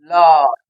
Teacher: ল উচ্চারণ করে দেখো, ল, জিহ্বার দুপাশ দিয়ে বায়ু বেরিয়ে যাচ্ছে, জিহ্বার দুপাশ দিয়ে বায়ু বেরিয়ে যায় বলে লকে আমরা বলবো পার্শ্বিক ধ্বনি